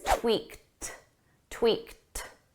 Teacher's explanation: This is in the past simple, so it's an ed verb. But because the verb ends on a k, we need a soft t.